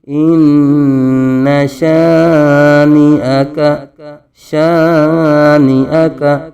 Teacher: شین کے آگے الف ہے. شین کو کھینچیں گے. الف مدہ ہو رہا ہے. نون بغیر کھینچے.